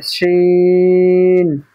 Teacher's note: জিম শিনের মাখরাজ একই, জিভের আগা, জিভের মাঝখান এবং তার বরাবর উপরের তালুর সাথে লাগিয়ে উচ্চারিত হবে